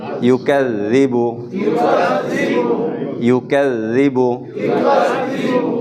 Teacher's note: জাল জিহ্বার আগা ব্যবহার করব